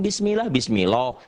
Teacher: apabila lafadz Allah didahului oleh huruf yang berharakat di bawah kasrah mengucapkannya tipis sehingga tidak sampai memenuhi mulut ketika mengucapkannya · Mengucapkannya tipis sehingga suara yang keluar bukan lagi O tapi A. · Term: tarqiq